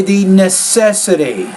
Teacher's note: Put stress necessity, so stress is on that second syllable.